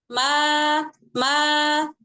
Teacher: huruf mim itu makhrajnya itu kan hanya dengan merapatkan kedua kedua bibir